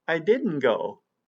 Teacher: Did you notice that on didn't go? Yes, there was no T on it. We dropped the T completely.